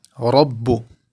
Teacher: Ra, full mouth because with the fatha.